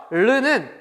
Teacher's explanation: 혀끝을 윗 잇몸에 댄 채 그 공기를 그 양옆으로 흘려보내면서 내는 소리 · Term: 유음